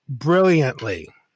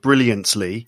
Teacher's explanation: I'm actually having you perceive the T by making it a slightly different way. I'm not taking the tip of my tongue and putting it on my gum ridge to say brilliantly.